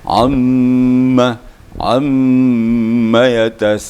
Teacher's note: Jadi gunnah tu agak dipuas-puasin dikit ya, sehingga kita tak penasaran gitu ya.